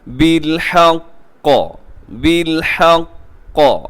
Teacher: بالحق، قاف کے اوپر تشدید ہے، وقف کرتے ہوئے ذرا مضبوطی کے ساتھ وقف کیجیے گا